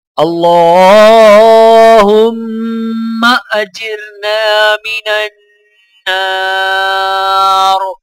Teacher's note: لام کے اوپر کھڑا زبر ہونے کی وجہ سے ایک الف کے برابر کھینچ کر پڑھا جائے گا · نون کو الف ساکن کے ساتھ ملاتے ہوئے ایک الف کے برابر کھینچیں گے، اور یہاں پر نون مشدد ہے تو لہٰذا غنہ کیا جائے گا۔